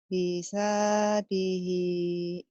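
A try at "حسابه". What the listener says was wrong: Heeh, tapi mulutnya kedengarannya kayak hisadihi, bener loh. Jadi kedengarannya kayak tadi hisadihi gitu.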